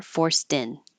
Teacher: it that word with a something that begins with a vowel my voice is going to come on a little early and that could change the T to a d · it's a little easier just to give in and have the voicing start a little earlier